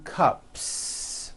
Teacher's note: unvoiced so for example you have one cup or two cups there's no voicing at the end of that word the S remains unvoiced